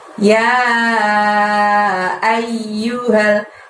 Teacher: ya di sana harus dibaca 5 ya panjangnya ya.